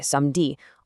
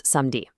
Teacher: A perfect example of this is the e caduc, which is also known as the dropped e. When French people speak quickly, they frequently just drop the e sound right out of the middle of words. For instance, the word for Saturday, "samedi", almost always just becomes "samdi".